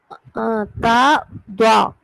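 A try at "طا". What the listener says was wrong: தா இல்ல, தான்னு சொன்னா கீழ் நோக்கி போகுது. நான் ரெண்டுமே வானத்தை நோக்கி தான் உச்சரிக்கிறேன். துவா துவா வித்தியாசம் விளங்குதா இல்லையா? உங்களோட ஓதுல ரெண்டுக்கும் வித்தியாசத்தை நீங்க குழப்பி கொண்டீங்க. நீங்க ஓதுற நேரத்துல துவான்னு தான் ஓதுறீங்க, துவா ஓத மாட்டேங்கிறீங்க. அதான் பிரச்சனை, வேற ஒண்ணும் இல்லை. ஓதுற சந்தர்ப்பத்துல ஓதணும் துவாவை, நீங்க ஓதுறீங்க துவாவை.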